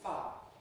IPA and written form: faː (fire)